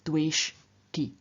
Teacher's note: And in the third singular, the sh, which is a retroflex sound, makes the t, the dental of the third person singular ending ti, also retroflex, and therefore we get dwesh ti.